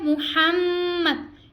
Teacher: میم مشدد کا غنہ ہو رہا ہے